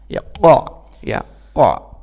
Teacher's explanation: qaf itu pangkal lidah kita, ya, menempel kepada tenggorokan kita